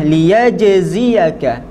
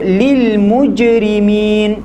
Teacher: Ketika mana kita mensukunkan jim, maka tekanan yang berlaku itu adalah pada lidah tengah yang bersentuhan dengan langit tengah.